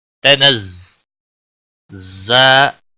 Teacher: تنزا کو تھوڑا سختی کے ساتھ پڑھیں گے کیونکہ اس کے اوپر تجدید ہے